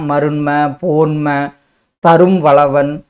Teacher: அடுத்தது மகர குறுக்கம். மெய்யெழுத்தான இம் அரை மாத்திரை அளவிலும் சில இடங்களில் மேலும் குறைந்து 1/4 மாத்திரையாக ஒலிக்கும். அந்த இம் குறைந்த ஒலிப்பதை தான் நம்ம என்னன்னு சொல்கிறோம், மகர குறுக்கம்.